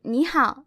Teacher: this tone change happens whenever you have two three tones next to each other our knee it's a 3rd tone character our how it's also